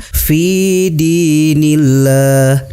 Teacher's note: Lafaz Allahnya dibaca tipis dan dipanjangkan 2 harokat. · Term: tarkik